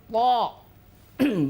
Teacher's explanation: benar-benar tidak boleh mengeluarkan udara tidak ada desis dalam huruf tho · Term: huruf jahr